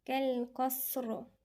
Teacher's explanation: الصاد هنا في همس جرى النفس. كأنه هنا مد اللي هو مقدار ايه حركتين، مد صلة صغرى.